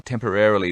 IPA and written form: ˈtem.pər.er.əl.i (temporarily)